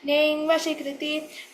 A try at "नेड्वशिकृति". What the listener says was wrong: नेड् not ning